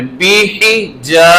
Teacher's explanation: اسی سے آخری آیت پہ اگر چلیں تو وہاں پر ہے بیحجا، با کی زیر، ہا کی بھی زیر، بیحی، دیکھیں با کی بھی زیر ہے، ہا کی بھی زیر ہے، برابر رکھنا ہے، بیحی، نہ لمبا نہ اس کو زیادہ نیچے لے کے جانا ہے، برابر ہی۔ بیحی، جیم کے ساتھ الف آ گیا اس لیے ہم نے اب اس کو تھوڑا سا لمبا کرنا ہے